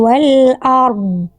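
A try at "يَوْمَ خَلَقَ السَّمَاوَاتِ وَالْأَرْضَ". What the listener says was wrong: Cuma tadi hamzah keb jangan o e. Tapi ro dan dnya bagus.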